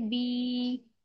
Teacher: जजम वाली या हो, उससे पिछले वाले हुरूफ के नीचे जेर हो तो या मद्दा होगा उसे, वहां पर हम या को एक अलिफ की मिकदार खींच कर अदा करेंगे